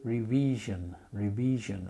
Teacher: especially where I live in St. Lucia, the people often use a long I sound, so they wouldn't often say revision, I.